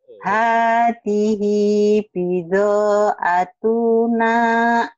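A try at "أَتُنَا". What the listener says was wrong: Tuhnya pendek. Atuna ya. Tekan.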